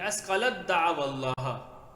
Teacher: اب تا نہیں پڑھا جائے گا، تا لکھنے میں آئے گی پڑھنے میں نہیں آئے گی